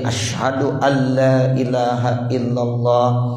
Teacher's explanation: Bunyi nun berubah menjadi bunyi lam. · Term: idgham bila ghunnah